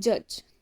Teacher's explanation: the sound starts with a complete blockage of air flow like a stop but then the closure opens slightly to allow air to escape with friction